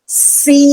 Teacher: dipanjangkan bunyi ya Sakinah ya Sakinah bunyinya i si bukan si kita tidak bisa membunyikan desis lama-lama tidak yang dipanjangkan bunyi I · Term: mad lazim muhafa Harfi